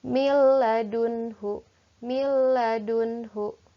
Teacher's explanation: kalau bilagunnah tidak ditahan langsung dimasukkan saja dileburkan saja · Selanjutnya contoh idgham bila gunnah. Hurufnya hanya ada dua, lam dan ra. Berarti ini dileburkan saja, tidak boleh ditahan.